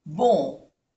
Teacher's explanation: bon lleva aquí una vocal nasal, O-N, on. Bon.